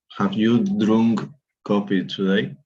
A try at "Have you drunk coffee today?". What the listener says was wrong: Very good. It's drunk, by the way, no? Drunk.